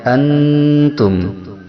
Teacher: Yang pertama ikhfa akrob yang hurufnya ada 3, yaitu T, To, dan Dal. Cara membacanya mendekati N, yaitu lebih dominan samarnya daripada dengungnya.